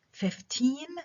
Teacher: Now sometimes even two stresses such as in the following words بيكون عندنا stress، يعني two stresses اللي هي strong stress و secondary stress, as in words like 15 عندي strong stress على المقطع الثاني و secondary stress على الأول